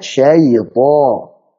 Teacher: Yang pertama untuk syai, ya-nya turunkan ya. Syaito. Kemudian to-nya tebalkan.